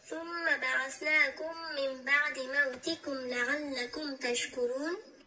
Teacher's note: در کلمه ثم میبینیم که میم مشدد است، اینجا غنه میکنیم و بعثناکم میبینیم که نون زبر ایستاده داره، مد اصلی است.